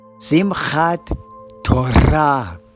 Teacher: in Sephardic Hebrew, the emphasis is on the final syllable. So it's Simchat Torah.